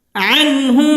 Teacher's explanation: আন এটা হচ্ছে ইজহার, গুন্নাহ ছাড়া স্পষ্ট করে পড়তে হবে।